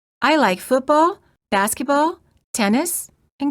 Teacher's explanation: used in words and phrases that are listed in a series The Voice Rises at the end of each item and falls with the final item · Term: non-final intonation, Non-final intonation